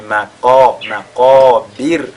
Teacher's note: la lettre Qaf qui est avec at-tafkhim